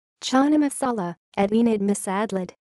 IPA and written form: ˈtʃənaː məˈsaːlaː (Chana masala)